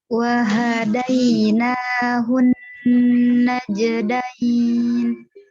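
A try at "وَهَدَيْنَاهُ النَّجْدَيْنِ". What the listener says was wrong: Baik, alhamdulillah. Barakallahu fiki. Hati-hati haknya ya.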